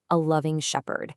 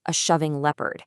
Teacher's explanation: So, pretty obviously, the Reverend meant to say a loving shepherd, but what came out was a shoving leopard. The L and the SH sounds just swapped places.